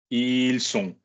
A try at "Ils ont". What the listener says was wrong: Ils ont. I fucking warned you. It's a Z sound. Good, because ils sont is like son. Son. It's the verb to fucking be.